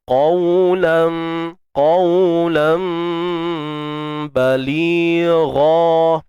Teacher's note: diterbalikkan bunyinya menjadi bunyi mim, sebutan mim